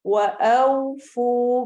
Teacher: औ सही तरह से हमारे होंठ गोल हो जाएंगे। वअौ फू फू को लंबा करना है।